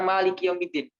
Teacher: ma istifal bukan isti'la. Ma itu rendah suaranya.